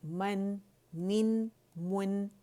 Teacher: پہلے آپ نے میم کے دونوں ہونٹوں کے خشک حصے پکڑنے ہیں، پھر گولائی دینی ہے، اور جب نون ساکن پہ آئیں گے تو گولائی ختم کر دینی ہے